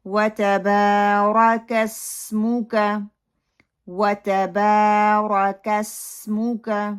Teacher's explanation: را کو موٹا پڑا جائے گا کیونکہ اس کے اوپر زبر آ رہی ہے. پھر میم کی جو پیش ہے اس کے لیے اپنے لپس کو پراپر اپنے راؤنڈ کرنا ہے اور اس کو ٹائٹ کرنا ہے اور اس کو پھیلا کے نہیں پڑھنا.